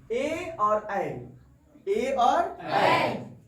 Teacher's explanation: ए और ऐ का उच्चारण स्थान क्या होगा कंठ प्लस तालू